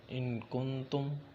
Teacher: نون پر جزر ہے تو ادھر اخفا کیا جائے گا